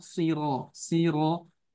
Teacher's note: Jangan si tapi oh, siro, siro. Ya, ro-nya tebal karena fathah.